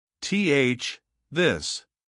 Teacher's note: The second is the voice th, where your throat vibrates while you make the sound, like in the words this, that, and the.